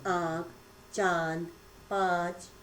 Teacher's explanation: अनुनासिक, इसका उच्चारण नाक और मुख दोनों से होता है। इसका चिन्ह चंद्र बिंदु की तरह आपको दिखाई देता है, जैसे आँख, चांद, पाँच आदि।